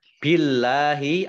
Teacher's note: Allahnya dibaca tipis karena harokat di depannya kasroh